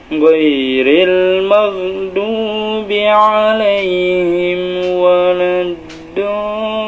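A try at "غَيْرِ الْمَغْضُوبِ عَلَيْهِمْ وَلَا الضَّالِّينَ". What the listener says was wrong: nadanya saat ini belum naik datar Turun malah tinggi tadinya tinggi setengah yang sudah dapat nih tinggi setengah kemudian datar turunnya belum dapat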